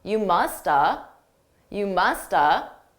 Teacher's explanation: notice I didn't actually say have I reduced that entirely